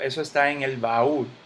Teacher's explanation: hay dos golpes de voz, ba y ul.